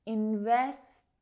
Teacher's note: Both of them are stop T's, all right? So you don't need to aspirate, you don't need to let go of the air afterwards. · Now you can hear that those T sounds are very soft.